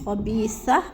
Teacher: سانس ٹوٹنے کی صورت میں خبیثہ پڑھ لیں گے، تا کو ساکن کر کے